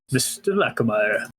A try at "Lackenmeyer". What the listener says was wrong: Lackenmeyer. There's no N there. Lackenmeyer.